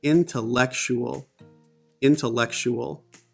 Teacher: Here, there's a comma before in and an apostrophe before lek. So the stressed syllables are in, lek.